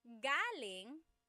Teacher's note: So galing, the emphasis is on the first syllable.